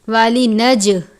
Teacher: جیم پر آپ نے قلقلہ کرنا ہے، جیم کو زیادہ ظاہر کر کے پڑھیں گے